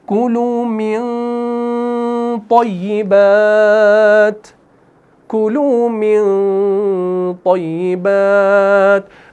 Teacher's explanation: تو اس نون ساکن میں جب ہم نے غنہ کیا نا اخفا کے ساتھ تو ہم نے اس کو موٹا کیا، منہ بھر کے کیا